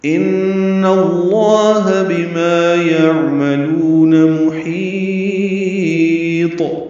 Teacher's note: ان میں نون مشدد پہ غنہ ہے